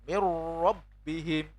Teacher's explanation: nun sukunnya masuk, sudah kita langsung baca ro-nya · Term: idgham